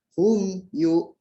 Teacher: Jadi apabila ada mim sukun bertemu dengan salah satu huruf izhar selain mim dan ba, nah itu huruf izhar itu selain mim dan ba ya, maka mim sukunnya dibaca jelas, tidak dibaca samar, dibaca jelas. Hum yu. Tidak dibaca jelas tanpa dengung sama sekali gitu. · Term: izhar syafawi